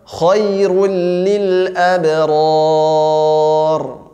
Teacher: Ya, ra sukunnya dibaca tebal